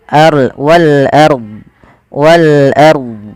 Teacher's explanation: Ro tafkhim yaitu rnya dibaca dengan tebal